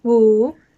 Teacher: The number 5 is pronounced Wu, and it's in third tone going down and then up